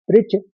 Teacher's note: दो च का उच्चारण आएगा क्योंकि आघात है